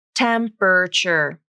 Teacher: three syllables and the a is dropped from the pronunciation temperature notice how the middle and final syllables share the same er vowel temperature even though the middle syllable is spelled with an er · Notice how the middle and final syllables share the same vowel.